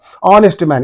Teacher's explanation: In this H is silent. We are pronouncing the word from O. O is giving a vowel sound.